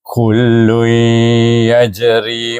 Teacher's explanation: dibaca dengan dengung dua harakat · Kawalam kul tanwin bertemu dengan ya, dibaca dengan idgham ma'al gunnah · jim huruf qalqalah, maka dibaca dengan qalah sugra kerana dia berada di tengah kalimah, dibaca wasal antara suku kata dengan suku kata.